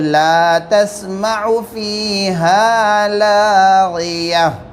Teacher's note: لیکن لاغیہ کے اندر گول تا پر ہم وقف کر رہے ہیں تو یہ ہائے ساکینہ بن جاتی ہے، تا کی جگہ ہمیں ہاں لگا دینا ہے